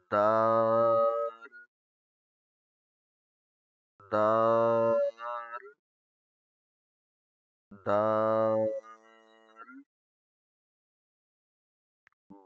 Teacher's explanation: زبان کی نوک اوپر والے دانتوں کے پیچھے جو ابری ہوئی جگہ ہے وہاں پر ٹچ ہوگی، جہاں سے ہم تا پڑھتے ہیں، مگر یہ زیادہ نرم ہے تا کی بنسبت.